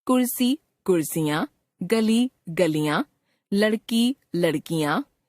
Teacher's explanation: शब्द की अंतिम दीर्घ ई ह्रस्व ई में बदल जाती है